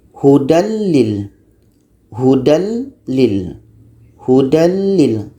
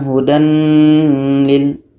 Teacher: Al-Baqarah ayat 2, tanwin bertemu dengan lam. Tanwin ni kita hilangkan dan masuk kepada la. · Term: Tidak berdengung